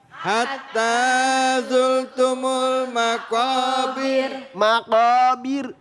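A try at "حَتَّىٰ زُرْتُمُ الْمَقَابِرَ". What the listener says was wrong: Jangan bir begitu. Takrirnya cuma takrirnya enggak terlalu panjang ya. Terlalu panjang. Jadi di sini ini maqabir. Nah, berarti dibaca tar dibaca tip.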